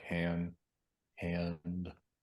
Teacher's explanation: am I sort of off gliding into a schwa